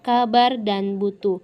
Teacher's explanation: huruf B yang bercirikan hidup, oral, bilabial, dan plosif.